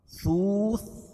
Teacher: واو ساکن سے پہلے پیش ہو تو واو مدہ، اس کو ایک الف کے برابر کھینچ کے پڑھیں گے